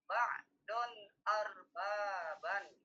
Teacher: Izhar itu maksudnya menjelaskan bunyi nun. Ba'don tidak boleh didengungkan, tidak boleh dirubah suaranya selain bunyi nun.